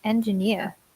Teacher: It's the opposite. People often stress the beginning, but it should be the end.